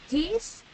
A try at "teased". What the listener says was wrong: So, tú la estás cortando todas, la que estás cortando correctamente, la estás pronunciando muy bien. Pero la estás cortando todas.